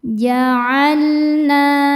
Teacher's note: hukumnya mad tabi'i muqaddar, sebab huruf nun berharokat fathah panjang. Cara membacanya dipanjangkan 2 harokat.